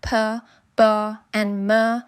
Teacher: Bilabial, both lips come together to form sounds like p, b, and m.